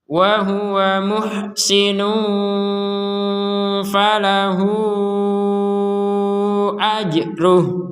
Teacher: falahu di sini ya ada harokat bendera, kita panjangkan 4 sampai 5 harokat karena bertemu di sini dengan hamzah.